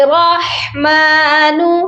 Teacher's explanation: را کو جب ہا کے ساتھ ملائیں گے را موٹا ہوگا اور ہا کی آواز حلق سے آئے گی